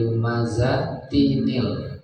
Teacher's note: jadi ada bunyi nun gitu untuk menggantikan bunyi tanwin. Karena kalau dibaca lumazatil, tanwinnya hilang. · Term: nun wikoya